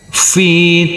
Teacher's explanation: Huruf ta yang bersukun ini tidak boleh kita pantulkan karena ini adalah bukan bacaan qalqalah. Dan huruf ta marbutoh yang berfathah tanwin ini kita kasih tambahan akhiran huruf n.